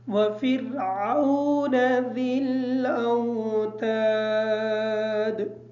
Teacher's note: وفرعون کی جو را ہے اس را کو ہم باریک پڑھیں گے کیونکہ را ساکن ہے اور را اپنے پچھلے والے حرف کے ساتھ ملا کے پڑھی جائے گی اور پچھلا والا حرف جو فا ہے اس کے نیچے زیر ہے اس وجہ سے را کو باریک پڑھیں گے.